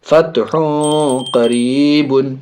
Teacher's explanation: ہا کے اوپر تنوین دو پیش، آگے قاف بڑی قاف حرف اخفا میں سے ناک میں آواز جائے گی